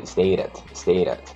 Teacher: A letra T, quando está entre duas vogais, ela vibra, no inglês americano